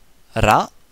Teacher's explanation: le R est toujours roulé